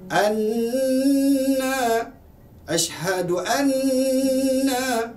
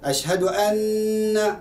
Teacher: bertanda sabdu, mesti suara itu keluar daripada hidung, rongga hidung.